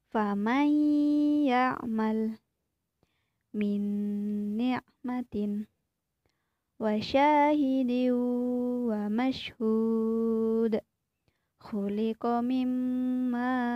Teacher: dengan memasukkan suara nun sukun atau tanwin ke dalam huruf sesudahnya seakan-akan tidak ada nun sukun atau tanwin membacanya disertai dengan dengung dan ditahan selama satu setengah lift atau tiga harokat nah ini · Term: Idgham Bighunnah